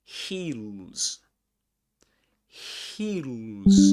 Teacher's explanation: We've got this final z, heels, heels, this long E sound.